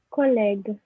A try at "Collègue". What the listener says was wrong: Collègue. That's very good.